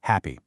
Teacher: The constriction, the place is way back in your throat at the glauus. And the manner is a fricative. You're creating that hissy friction sound. · Now for the P sound, also voiceless. The place is bilabial, you use both lips. And the manner is a stop. You completely block the air and then poof, release it. · That first H sound. Well, it's voiceless, no vibration, the motor's off. The constriction, the place, is way back in your throat, at the glottis.